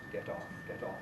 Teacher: somebody of my age and background still uses a voiceless alveolar plosive